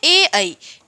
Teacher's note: ये जो ए और ऐ है ये हम दो चीजों से बोलते हैं, कंठ और तालु दोनों मिलाकर के